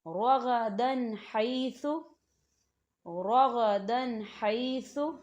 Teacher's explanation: رغدن حیث، رغدن حیث، تو یہاں دیکھیں دال کے اوپر تنوین ہے اور تنوین کے بعد ہا آ رہا ہے، تو یہاں پہ غنہ نہیں ہوگا، صرف ہم تنوین کی آواز کو ظاہر کریں گے۔